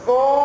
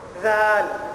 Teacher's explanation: ضو آواز موٹی ہے. ضو. ذال آواز باریک ہو گئی